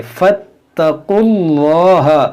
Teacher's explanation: जलाल से पहले पेश है तो इसको मोटा पढ़ेंगे।